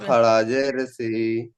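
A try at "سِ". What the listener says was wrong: আরো একটু বেশি করে টান দেবেন। খাড়াজের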